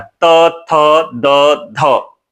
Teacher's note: त थ द ध ये जीभ दांत में टच करती है दंत व्यंजन है